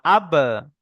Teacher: দুই ঠোঁটের ভিজে অংশ হতে বা উচ্চারিত হয়। যেমন আব, যেমন আব, মানে হামজাটা যুক্ত করতে হবে, হামজা বা আবার আব। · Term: বার মাখরাজ